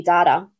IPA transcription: ˈdaːtə